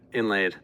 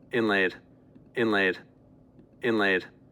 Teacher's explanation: the N, so-called, is kind of more nasalization of the vowel